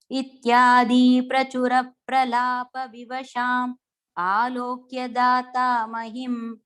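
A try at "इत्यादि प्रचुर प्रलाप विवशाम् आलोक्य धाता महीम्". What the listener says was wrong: One is the ityadhi is a short one, okay? So ityadhi prachura. And the mahim is a long one. Okay, I think you just said it reverse. So ityadhi and then mahim.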